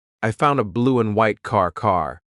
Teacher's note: The word and is being reduced. Just cut off that final D sound.